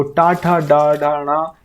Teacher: टा, ठा, डा, ढा, णा, ये सभी हमारे मूर्धा से उच्चारित होते हैं